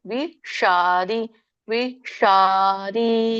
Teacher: ಷ ಮೂರ್ಧನಿಷ ಸ್ವಲ್ಪ ನಾಲಗೆ ರೋಲ್ ಮಾಡಿ ಹೇಳಬೇಕು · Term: ಮೂರ್ಧನಿ ಶ